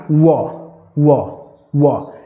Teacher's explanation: वकारस्य दंतोष्ठम वकारस दंतोष्टम एक अकेला वह वर्ण है अक्षर है व जिसका उच्चारण स्थान दंत ओष्ठ है दांत और ओष्ठ है · जब वह आप बोलते हैं, तो दंत माने जीव्हा जो है हल्की सी दांत को स्पर्श करती है। जी हां, हल्की ही स्पर्श करती है।